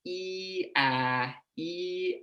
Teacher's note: you will feel your jaw and your tongue drop as you go from e to a